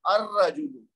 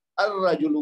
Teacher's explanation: شمسی ہے، تو اس لیے الف لام جب لگائیں گے تو لام کی آواز پڑھنے میں نہیں آئے گی، الرجلو کہیں گے، یعنی لام کو چھوڑ دیں گے، اور حمزۃ الوصل کو را مشدد سے ملا کر پڑھیں گے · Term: حرف شمسی